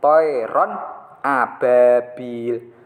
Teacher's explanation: harus dibaca tegas tidak mendengung